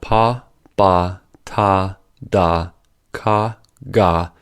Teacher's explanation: Plosives are produced by blocking the air and then popping the air. The blocking of the air can be made by such instruments in the mouth as the lips, tongues, and glottis.